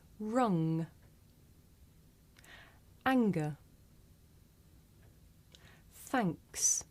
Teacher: we make this sound towards the back of the mouth · if you do this sound correctly you can feel a vibration in your nose